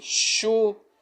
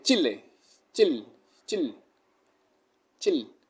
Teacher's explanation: no es lo mismo esa pronunciación SH que es más alargada, que hacemos así, shu.